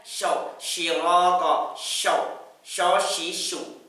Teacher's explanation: Itu huruf shin dari tengah lidah